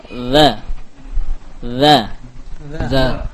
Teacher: Cukup kita sentuhkan ke ujung lidah. Ujung lidah ke ujung gigi seri atas.